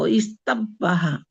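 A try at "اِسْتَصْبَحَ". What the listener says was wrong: না না, তখন সিনটা তো উচ্চারণ হবে। সাব্বাহার মধ্যে আর রুট লেটার কি? সিন, বা, হা। আপনি প্রথমে আসবেন হামজার নিচে জের, এরপরে সিনের উপরে সাকিন, এরপরে তা, ইস্তা।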